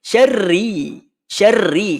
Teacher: huruf ra yang ditandakan kasrah ataupun berbaris bawah ini mesti dibaca dengan tipis